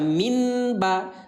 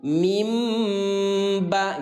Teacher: Yang diganti adalah bunyi nun yang baris mati menjadi suara mim. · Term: bacaan iqlab